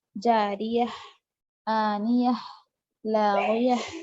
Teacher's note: جیسے جاریتن ہے، یہاں پر آیت آ گئی تو جاریہ پڑھیں گے، چھوٹی سی ہا کی آواز آخر میں، ہا ساکن کی آواز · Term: ہائے ساکینہ